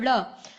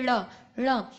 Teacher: आपकी जो टंग है वो ट्विस्ट हुई है तालू के पीछे की साइड पर जाकर और वहां से उसको धक्का दिया जा रहा है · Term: उत्क्षिप्त